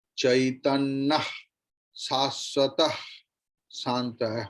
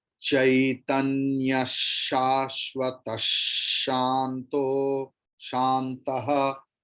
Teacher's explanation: Here you have to pronounce the Visarga's pronunciation as Shakara.